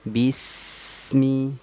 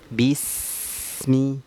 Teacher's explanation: Maka kalau kita lihat di huruf sin di lafal basmalah itu dia tidak boleh terpantul hurufnya, tidak boleh terjeda, tidak boleh terpantul. Kenapa? Karena sifatnya adalah rokhwah, suara mengalir.